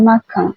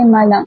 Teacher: Dalam dialek Terengganu huruf N dan huruf M pada akhir sesuatu perkataan itu sahaja yang akan ditukar kepada huruf NG. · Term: bunyi ngg